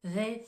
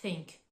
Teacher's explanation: le TH de the il est plus prononcé on va mobiliser les cordes vocales tandis que le TH de Think il va être plus doux